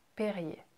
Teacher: And the last R, again, we don't pronounce it. It just, ER can sometimes be a E sound.